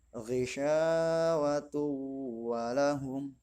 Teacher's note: Seperti yang terdapat dalam surat Al-Baqarah ayat 7 yang berbunyi ghisyawatu walahum, tanwin berhadapan dengan wawu, yaitu salah satu huruf idgham bi gunnah. Ghisyawatu walahum menggunakan dengung yang artinya masih keluar dari hidung.